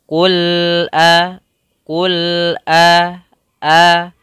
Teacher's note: Kemudian pada lafal a, di sini ada huruf hamzah. Maka hamzah makhrajnya kita keluarkan pada pangkal tenggorokan